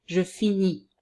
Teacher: we pronounce the verb as in the infinitive, but without the sound R at the end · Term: without the R